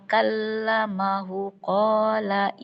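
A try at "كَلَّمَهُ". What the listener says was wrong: Kallamahu. Hu-nya panjang.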